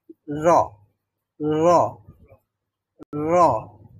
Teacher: যায় মানে জিহ্বার অগ্রভাগ অথবা আমরা পিঠ বলতে পারি পৃষ্ঠ জিহ্বার অগ্রভাগের পৃষ্ঠ মানে হলো হালকা একটু অংশ এটা উপরের যেই দাঁত রয়েছে দাঁতের গোড়ার দিকে মাড়িতে যুক্ত হতে হয়